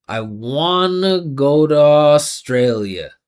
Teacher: Listen how the vibration never stops. These sounds get connected.